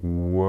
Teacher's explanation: Depois o L, a língua em cima, encosta em cima, a ponta da língua.